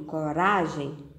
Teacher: Na palavra coragem, ra é a sílaba mais forte. Ra é a sílaba tônica da palavra coragem.